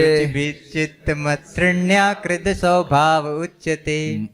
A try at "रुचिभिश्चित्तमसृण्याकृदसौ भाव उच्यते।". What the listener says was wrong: मत नहीं है, मसृण्या।